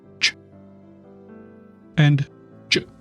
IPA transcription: tʃ and dʒ